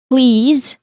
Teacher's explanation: So, there's a buzzing sound for please. And then there's a short e sound. · your throat is clearly vibrating which means that your um your letter Z sound here is a voiced sound. So, a buzzing sound.